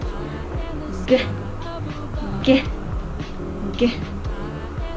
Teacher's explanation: for the letter G, it is a velar plosive